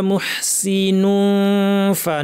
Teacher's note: দাঁত ঠোঁটের উপর লাগিয়ে নাক থেকে গুন্না। নুন ফা বলার সময় ফ্যাস ফ্যাসে আওয়াজ, প্রচুর আওয়াজ, প্রচুর বাতাস।